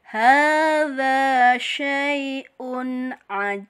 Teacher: Tapi ba ini hurufnya adalah mempunyai sifat, mempunyai hukum bacaan kolkolah, seperti ini dal ya. Ini namanya kolkolah kubro, kolkolah yang besar, pantulannya lebih besar. Karena aslinya hurufnya tidak mati ya.